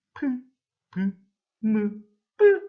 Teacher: 윗입술과 아랫입술이 막혔다 터지면서 나는 소리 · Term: 양순음